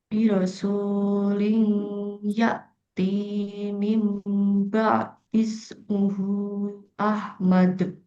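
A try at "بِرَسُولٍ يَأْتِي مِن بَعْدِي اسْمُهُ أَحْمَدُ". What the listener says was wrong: Rasul dua aja. Yati dua aja. Jadi ini kayak kepanjangan nih. Soalnya sama Yati. T-nya juga kepanjangan.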